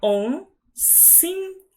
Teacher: O si é o mais forte